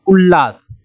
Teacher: त के बाद यदि ल हो तो त ल में बदल जाता है